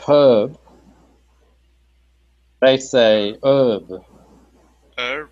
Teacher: in America they have a lot of words like herb they don't say the H